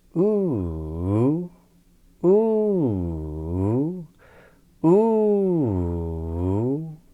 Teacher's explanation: So this circumflex Inflection sounds bit like this: ooo, ooo, ooo. So it goes up, down, up, rise, fall, rise.